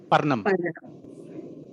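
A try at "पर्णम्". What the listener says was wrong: It is not Nakara, it is Nakarana. Parnam.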